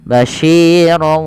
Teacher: Yang kedua dinamakan dengan gunnah disertai dengan bacaan gunnah yang artinya dia dimasukkan ke huruf waw dan ditahan. Basyirau sambil dimasukkan ke rongga hidung karena dia gunnah.